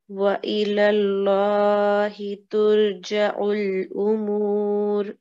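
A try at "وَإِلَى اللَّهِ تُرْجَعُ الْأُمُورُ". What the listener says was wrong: So you need to remember to round when it's a fatha before the word Allah.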